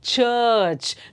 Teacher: ಚರ್ಚ್ ದೀರ್ಘ ಇದೆ ಅಲ್ಲಿ, ಚರ್ಚ್. ರಾ ಸೌಂಡ್ ಹೇಳ್ತಾನೆ ಇಲ್ಲ ನಾವಲ್ಲಿ